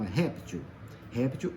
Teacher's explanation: réptil é uma palavra paroxítona tá vendo o ré é que é que é forte